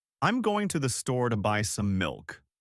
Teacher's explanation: Our pitch range in a normal sentence is usually narrower. If I'm stating a fact, my pitch will stay pretty level and then drop at the end.